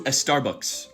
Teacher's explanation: Native English speakers have no problem saying sta or spa or ska at the beginning of a word, but Spanish speakers will often add an E. This is because every language has specific rules about where you can put certain sounds, but they're not always the same between languages.